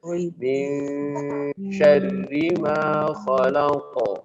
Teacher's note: ketika kita mendengung itu posisinya langsung di huruf shin ya karena ketemu huruf shin ya